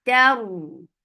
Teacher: You're lifting your tongue up to make this ra heavy. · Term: ra will be heavy